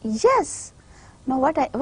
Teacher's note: I am putting more stress on the word yes than the previous two word